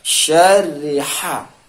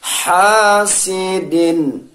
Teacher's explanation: ha keluar di tengah kerongkongan